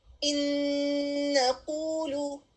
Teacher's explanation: نون ساکن آنے والے لیٹر نون میں مرج ہو رہا ہے اور غنہ کے ساتھ ادا ہو رہا ہے. اور نون، کیونکہ نون کی آواز اس میں مرج ہو گئی ہے، اگر کوئی اور لیٹر ہوتا تو پھر بالکل نون کی آواز نہ آتی، لیکن اگلا لیٹر کیونکہ نون ہے تو اس سے ہمیں آواز آ رہی ہے.